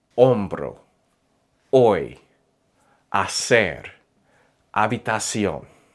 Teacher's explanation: In Spanish, the letter H is completely silent. Not sometimes, not only on weekdays, always.